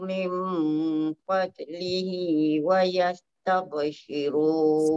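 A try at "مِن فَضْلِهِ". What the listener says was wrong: Sikit lagi. Min fad tu tebalkan dot.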